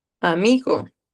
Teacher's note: Entonces en mí va a estar el acento, ¿ok? Entonces va a ser grave y pues llana.